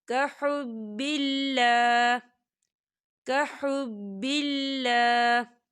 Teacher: تو وقف کی صورت میں ہا جو ہے وہ ساکن ہو جائے گا